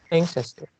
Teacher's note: the stress is at the first syllable